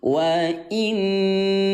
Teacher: cara membaca ghunah yaitu dengan cara tahan dua ketukan